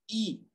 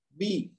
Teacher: جو اے sound ہے نا، اس کو آپ نے ای ساؤنڈ میں چینج کر دینا ہے